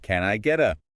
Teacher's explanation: Notice how your tongue just briefly taps the roof of your mouth rather than pressing hard? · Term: flap T